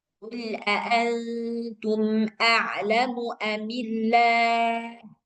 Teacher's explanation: jadi nggak perlu ada gunnah dan suara mim sukunnya jelas. · Mim sukunnya dibaca jelas dan tak perlu dibaca dengung. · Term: izhar syafawi